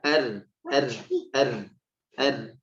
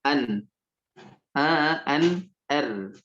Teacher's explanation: ujung lidah ke arah langit-langit ya, lebih dalam daripada huruf nun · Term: huruf ro